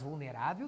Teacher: vulnerável tem a sílaba tônica na penúltima posição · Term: paroxítona